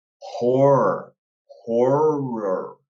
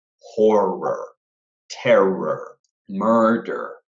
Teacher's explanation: your mouth just needs to open up a little bit, as if you're saying a little mini O, horror, without pronouncing it completely, and then it goes back in.